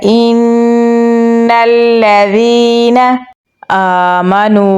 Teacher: हमज़ा को नून के साथ मिलाएंगे और गुन्ना करेंगे। नून को लाम के साथ मिलाएंगे। · हमज़ा पे खड़ी ज़बर है तो इसे हम लंबा पढ़ेंगे। नून को वाव के साथ मिलाएंगे।